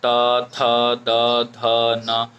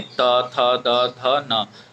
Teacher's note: तवर्ग जो होता है ये दंत से उच्चारित होता है।